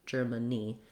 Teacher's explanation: Letter A is going to say a schwa here, so it's not like the word man, even though it's spelled the same as man.